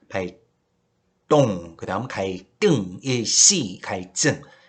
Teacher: 한자어의 리을 받침 뒤에 연결되는 디귿 시읒 지읒은 된소리로 역시 발음한다라고 했어요